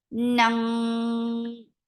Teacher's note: heavy ikhfa. Keep your tongue lifted.